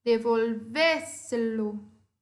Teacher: Percebe que é a sílaba anterior à antepenúltima que é acentuada? Então, essa sílaba, essa palavra, eu chamo de sobresdrúxula.